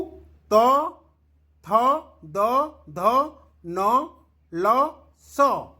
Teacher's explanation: ये दंत यानी उच्चारण स्थान दंत थिबारु याकु दंत्य बोली आमे कहि थाउ